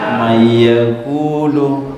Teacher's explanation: nunnya dileburkan ke huruf sesudahnya nunnya dileburkan didengungkan selama dua harakat dan ditahan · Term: idgham bilunna